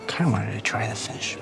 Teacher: he's dropping pronouns, he's dropping consonants, he's reducing to da, and dropping he's doing all kinds of funny things here.